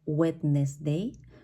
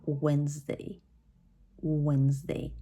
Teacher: letter D once again in this case is going to be silent